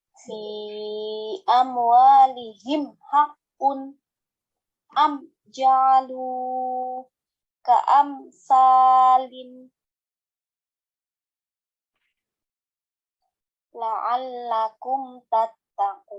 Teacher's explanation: Cara membacanya, mim sukun dibaca jelas dengan mulut terbuka. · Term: izhar syafawi